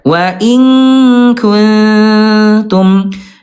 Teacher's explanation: kalau nun mati bertemu dengan ta ayah Bunda, dia namanya ikhfa akrob, tapi tingkat kesamarannya tinggi.